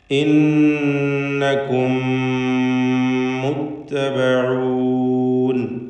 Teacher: 2 മീമും ഒറ്റൊന്നായി ഒരു മീമാക്കി ഇദ്ഗാം ചെയ്ത് മണിച്ചുകൊണ്ട് ഉച്ചരിക്കണം.